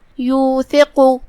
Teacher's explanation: قاف پہ پیش ہے. قاف کی ادائیگی زبان کے جڑ اور تالوں کے نرم حصے سے ہے. ہم قاف کو بھاری آواز میں ادا کریں گے کیونکہ وہ حروف التفخیم میں سے ہے.